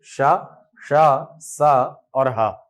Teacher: इन वर्णों का उच्चारण करते समय वायु का मुंह के किसी न किसी भाग से संघर्ष होता है। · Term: संघर्षी वर्ण